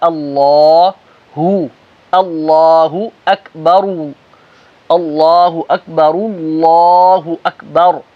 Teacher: اللہ کا حمزہ باریک لام موٹا